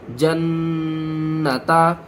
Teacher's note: نون مشدد ہے، غنے کے ساتھ پڑھیں گے، ہا کو چھوڑ دیں گے، تا کو پڑھیں گے۔